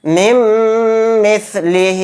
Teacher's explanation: نون ساکن کے بعد میم آ گیا تو یہاں پر بھی ادغام مع غنہ کا قاعدہ ہوگا، میم کے اندر غنہ کریں گے